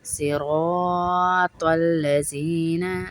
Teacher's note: صراط الذین، زی نہیں پڑھیں گے، سختی سے نہیں پڑھیں گے، سیٹی اور سختی نہیں آئے گی، یہ زال نرمی والا حرف ہے. صراط را کو پر پڑھیں گے، موٹا پڑھیں گے، زبر والا را ہے.